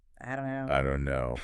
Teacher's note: you very rarely hear a clear t sound at the end of don't in casual speech, right? It kind of disappears. · the T is gone. The vowel is different. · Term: sound reduction